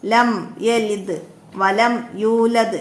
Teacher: ലാമിൻ്റെ മഹ്റജ് എവിടെയാണ്? നാവിൻ്റെ തലയുടെ അരുവും മേലെ മുൻപല്ലിൻ്റെ ഊനും